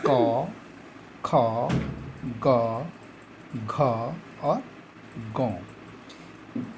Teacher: क वर्ग की जो ध्वनि है वो गले से आती है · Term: कंठ